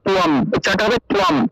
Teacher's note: অনুস্বার আছে, তাহলে উচ্চারণটা হবে অনুস্বারের পরিবর্তে ম উচ্চারণ হবে, আর তয়ের নিচে বফল থাকায় তুয় উচ্চারণটা হবে।